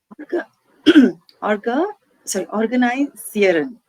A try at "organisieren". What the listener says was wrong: No. orga. Don't pronounce the R part. Orga, organi, organi, organisieren, organisieren, organisieren.